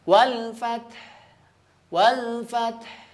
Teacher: Ya, ta-nya tetap terbaca. Kemudian ha tengah tenggorokannya juga terbaca. Ya, ta tetap terbaca dan ha-nya juga tetap terbaca.